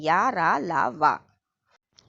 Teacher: इनके उच्चारण में श्वास का अवरोध बहुत कम समय के लिए होता है, अतः ये अंतस्थ व्यंजन कहलाते हैं। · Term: अंत्यस्थ व्यंजन